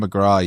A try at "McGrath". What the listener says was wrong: McGrath. McGrath. think you did a Tim McGraw there is what you were doing.